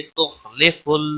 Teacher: خا حروف مستعلیہ میں سے ہے، پر پڑھا جائے گا